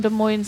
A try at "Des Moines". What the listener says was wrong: There, you don't pronounce the S, dummy. Des Moines. It's don't pronounce the S.